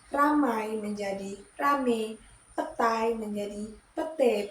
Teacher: Perubahan ini terjadi pada bunyi vokal rangkap I ke vokal tunggal e.